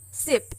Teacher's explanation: S as in sip is on the alveolar ridge